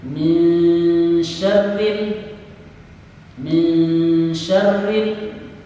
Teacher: Yang dinamakan dengan tawallud adalah membunyikan huruf secara berlebih yang bukan huruf qalqalah. Lam bukan huruf qalqalah, oleh karena itu tidak boleh ada pantulan di huruf lam.